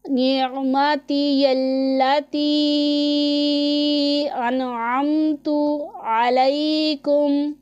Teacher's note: عین کے مخرج کا اچھے طریقے سے ہم دھیان رکھیں گے۔ عین حلق کے درمیان والے حصے سے ادا ہوتا ہے